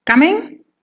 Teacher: you are saying it in a rising tone. That means it is a question.